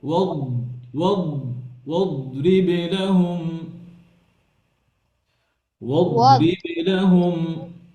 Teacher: দদকে heavy করতে হবে, আবার হচ্ছে আওয়াজ বন্ধ করা যাবে না। দদের মধ্যে রখাওয়া আছে।